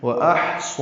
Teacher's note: واحصا واو ہونٹوں کی نا تمام گولائی سے ادا کریں گے، حمزہ اقصی حلق سے بالجہر ادا کریں گے، ہا ساکن پہ ہم سے اور جس میں سانس جاری رہتی ہے.